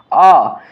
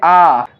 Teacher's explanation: जब हमने यहाँ पर आ का उच्चारण किया तो आ के उच्चारण के लिए थोड़ा सा ज़्यादा समय लग रहा है